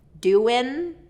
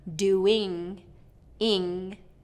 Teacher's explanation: Doin' is touching the front, doing, ing, is the back